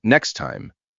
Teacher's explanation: The T in next may be very small or hard to notice before time.